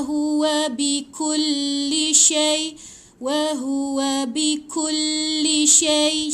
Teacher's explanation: Bila baris atas mati dengan ya, dia bunyi syai. Sya mati dengan ya, ada bunyi ai kan belakang.